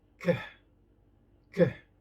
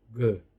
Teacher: And the third, the velar plosive. For the voiceless, k, k. And for the voiced, g.